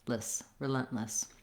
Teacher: I have a schwa, or almost, again, no vowel in this last syllable, another reduced vowel